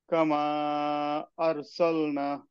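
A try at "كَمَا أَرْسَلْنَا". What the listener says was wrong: না, না, একটু টান হবে। নুন আলিফ জবর মধ্যে আসলি।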